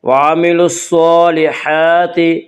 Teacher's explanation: صاد کو پر پڑھیں گے، صاد حروف مستعلیہ میں سے ہے